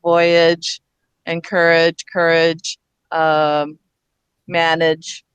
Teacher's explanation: we often say edge instead of age, like voyage, encourage, courage, manage